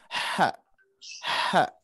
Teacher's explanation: Yang H mungkin istilah hak kecil adalah H yang di tenggorokan tengah